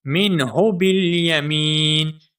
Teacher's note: آخر میں جو ہا ہے یہ موٹی ہا ہے. ٹھیک ہے، سینے سے آواز آئے گی. مِنْهُ بِالْيَمِينِ، یمین میں جو میم ہے اس میم کو ہم ایک الف کے برابر کھینچ کر پڑھیں گے کیونکہ یہاں پر یا مدہ ہے.